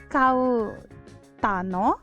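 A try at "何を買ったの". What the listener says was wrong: So this is not kau. Kau becomes ka. Kattano.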